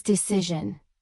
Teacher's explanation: with stress on the second syllable and that crucial z sound instead of a hard s sound